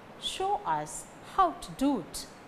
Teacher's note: Show, how, do carry stress.